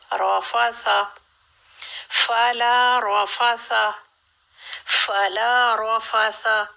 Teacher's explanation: ثا میں سین جیسی سیٹی نہ آئے